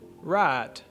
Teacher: if you have a southern us accent you'd actually start on the ah vowel and mostly just stay there